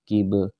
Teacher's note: Qib ada qalqalah ba di sini yang disukunkan, maka harus dibaca pantulan sedikit. Dan dia disebut qalqalah sugra karena dia berada di tengah-tengah kalimat atau di tengah-tengah ayat, ya.